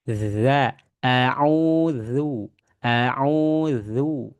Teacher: Huruf zal ini ada di ujung lidah ya, mengenai ke nah ini nih.